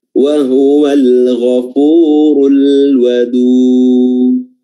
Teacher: Jadi kedengaran seperti huruf o, padahal bukan bibir yang bulat seperti o, namun pangkal lidah yang diangkat naik, makanya istilahnya adalah isti'la, naik, yaitu pangkal lidah diangkat naik, sehingga memunculkan atau menimbulkan efek suara o, padahal bukan bibir yang bulat. Bibir tetap terbuka seperti biasanya, ya, bukan ga, bukan juga tapi wa huwal ghafurul wadud.